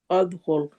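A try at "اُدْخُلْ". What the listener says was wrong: अब ये अद क्यों हो गया?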